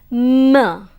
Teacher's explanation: M is known as a bilabial nasal since both the lips come together